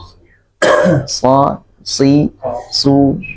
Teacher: Jadi tinggal ditebalkan saja, tidak perlu dimonyongkan, ditebalkan suaranya jadi so ya